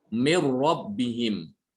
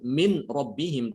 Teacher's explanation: Tapi di sini berlaku idgham, Sehingga pengucapannya cukup satu aja, yaitu dibaca dengan ro. Seakan-akan nunnya itu hilang.